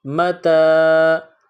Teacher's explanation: اگلا حرف دیکھیے، میم پر زبر ہے، میم زبر ما، تا، یہ نقطوں والی تا ہے، چھوٹی تا، اس کو باریک پڑھتے ہیں۔ تا کے بعد الف ہے، الف سے پہلے زبر آیا ہوا ہے تو یہ حروف مدہ ہے، اس کو تھوڑا کھینچ کر پڑھیں گے۔